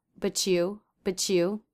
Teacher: You might hear a CH sound happening between but and you